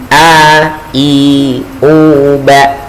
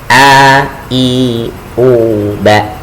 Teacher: Contohnya ketika kita melafalkan huruf a ya, huruf hamzah ya. Huruf hamzah ini keluarnya dari tenggorokan bagian bawah.